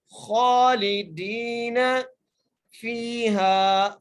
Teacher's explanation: ایک الف مقدار دال کو کھینچ کے پڑھیں گے